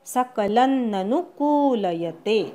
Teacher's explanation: सकलन लवरच्या अनुस्वाराचा अर्धा न म्हणायचा. सकलन ननु नु ऱ्हस्व आणि कू दीर्घ